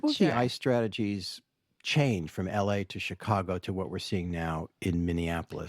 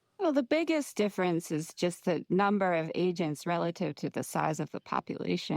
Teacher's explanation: One, listen to the vocal fry.